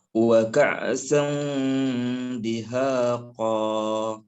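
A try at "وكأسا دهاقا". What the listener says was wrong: Nah, bukan ain, hamzah. Wa ka'san dihaqa. Untuk bunyi ikhfa-nya itu jangan terlalu ang. Tapi pertengahan antara an dan ang, tengah-tengah. Wa ka'san dihaqa.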